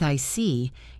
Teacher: When you show understanding with "I see," your tone drops slightly to show calmness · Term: falling tone